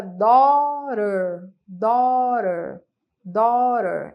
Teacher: esse T tem um som de R